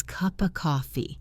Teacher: The P in cup connects to the O in of, and the F sound in of often becomes very soft or disappears entirely, or connects to the next word. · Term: connected speech